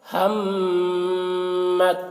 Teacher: تا کو نہیں پڑھا جائے گا، میم کو طا کے ساتھ ملا کر پڑھیں گے۔